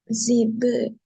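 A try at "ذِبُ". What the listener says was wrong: ஜி அல்ல, ரி. ரிபு.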